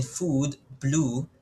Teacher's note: If you're gonna pronounce the U sound, as in food, blue, it's going to be at the back.